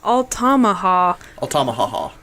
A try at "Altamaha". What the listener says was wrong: Altamaha. Altamaha. Yeah, but the river only has one ha. So it's Altamaha River.